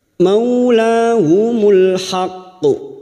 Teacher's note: Huruf qaf yang mati di akhir kalimat dan bertasdid masuk dulu baru kita pantulkan dengan kuat. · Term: Qalqalah kubra